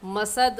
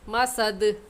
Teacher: دال حروف قلقلہ میں سے ہے، قلقلہ کر کے پڑھیں گے، مسد غلط ہے، صحیح یہ ہے مسد۔